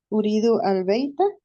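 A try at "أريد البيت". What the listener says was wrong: Sí, está bien así.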